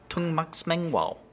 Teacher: the word tung mak smeng wao has a high tone on the third syllable, even though smeng as a verb alone is normally low tone.